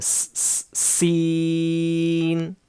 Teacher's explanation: سختی سے پڑھنا ہے، سین، پڑھتے وقت اس میں سیٹی کی آواز آنا ہے